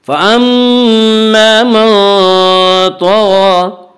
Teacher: فَأَمَّا میم مشدد غنہ ہوگا. غنہ کی مقدار ایک الف ہے. فَأَمَّا الف مدہ، الف ہمیشہ مدہ ہوتا ہے، الف سے پہلے زبر ہوتا ہے.